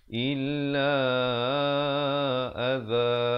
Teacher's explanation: za di ujung lidah. Jangan baca aza, itu jadi huruf zai, ya. Adza dengan sekurang-kurangnya 2, 4 ataupun 6.